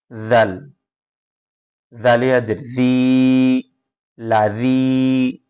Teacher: জিহ্বার আগা সামনের উপরের এবং নিচের যে দুইটা দাঁত আছে এই দাঁতের উপরে জিহ্বার আগাটা বসে জাল উচ্চারণ হবে